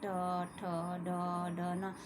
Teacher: मुर्दा के साथ जब हमारी जीभ स्पर्श करती है तो ये बोले जाते हैं। · हमारे दांतों के पीछे थोड़ी सी जो जगह है उसके साथ हमारी जीभ जो है स्पर्श करती है।